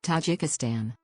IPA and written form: tɑːˈdʒiːkɪstɑːn (Tajikistan)